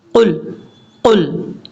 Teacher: یہ قاف دو نقطوں والا ہے، اس کو پر پڑھا جاتا ہے، موٹا پڑھا جاتا ہے ، اس کو بریک نہیں پڑھنا، قل نہیں پڑھنا، قل، قل،